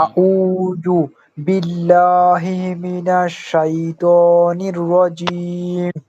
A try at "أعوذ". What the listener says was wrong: আবার আরো আরো সুন্দর করতে হবে। জালটা উচ্চারণ হচ্ছে না ভালোভাবে।